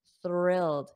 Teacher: notice my tongue goes between my teeth but it's unvoiced which means there is no sound